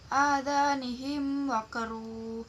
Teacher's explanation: Yang ketujuh, adanihim waqru, namanya bacaan idhar syafawi, sebab mim sukun dibaca jelas bertemu selain huruf mim dan ba, yaitu bertemu dengan huruf waw.